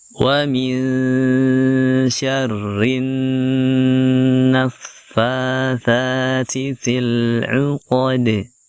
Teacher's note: Lalu setelahnya ada huruf dal yang kita sukun padanya, dan huruf dal kita qalqalahkan karena dia termasuk huruf qalqalah ketika disukunkan